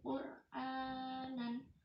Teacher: ro di situ dibaca tafhim karena harokat sebelumnya domah.